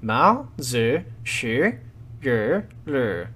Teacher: The Chinese title of the book is, as best as I can manage, Mao Zi Shi Yu Lu, with Mao in the second tone, Zi Shi in the third and then the second tone, and then Yu Lu in the third and the fourth tone